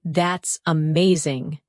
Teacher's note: your tone rises with excitement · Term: intonation